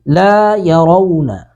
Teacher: یہاں پہ رو کو پر کر کے پڑھنا ہے، باقی کو اپنی حالت میں ہم چھوڑ دیں گے